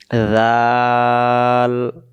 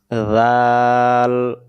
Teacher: জাল অক্ষরে জিহ্বার আগা থেকে নরম করে পড়তে হয়